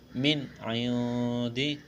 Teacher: نون ساکن کے بعد عین ہے، حروف حلقی ہے، یہاں پر اظہار کریں گے، غنہ نہیں کریں گے